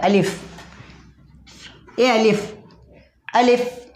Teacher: अलिफ हलक के खाली हिस्से से अदा होता है